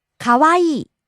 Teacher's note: rising on the second syllable wa falling on the last syllable e